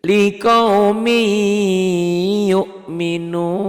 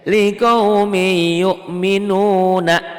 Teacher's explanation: dibacanya tuh berubah n-nya hilang ditelan y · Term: Idgham Bighunnah